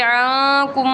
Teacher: जैसे कि अक्सर पढ़ा, अगर लिखने में जिस तरह लिखा हुआ है तो देखने में आएगा कि आकुम मीम यूँ पढ़ना था, लेकिन हम पढ़ेंगे आकुम, एक ही मीम बना देंगे, इसलिए मीम को मीम में मदगम करना, इदगाम करना, यानी एक चीज़ को दूसरी चीज़ के अंदर डाल देना, उसको कहते हैं इदगाम। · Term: इदगाम शफ़वी